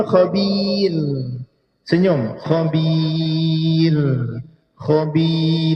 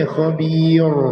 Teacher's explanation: Kalau di ra ini kerana huruf sebelumnya adalah huruf ya, maka dinipiskan.